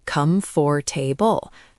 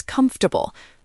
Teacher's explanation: We've completely deleted a vowel and replace the others with schwas.